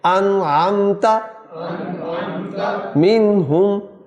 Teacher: عین، تو عین حروف حلقی میں سے ہے، لہٰذا یہاں غنہ نہیں ہوگا اور نون کو ادا کریں گے، ظاہر کر کے پڑھیں گے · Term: اظہار